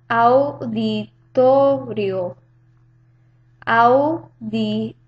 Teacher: You can note that the A and the U form a diptongo